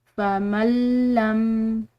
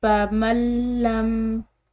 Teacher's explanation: मीम के साथ जब ये मिलेगा तो दरमियान में जो ये नून साकिन है ये बिल्कुल इसकी आवाज़ ख़त्म हो जाएगी। फमल्लम, इसको हम फमन लम अलग अलग नहीं पढ़ सकते, बल्कि इसको मीम को लाम के साथ मिलाएंगे।